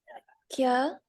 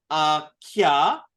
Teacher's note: that's aspirated ka, ka, and then it's connected to a ya